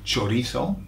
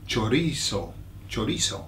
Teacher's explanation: Now I'm saying chorizo because I'm making the Z into a th